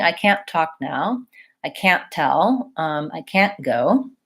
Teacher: really saying I can't go I'm saying I can't go and my T gets stopped that means I'm not releasing the burst of air · we tend to use what's called a stopped T on can't